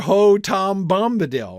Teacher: ho tom bomb are all stressed